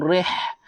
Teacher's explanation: Rih ha pedas. Pedaskan keluarkan angin.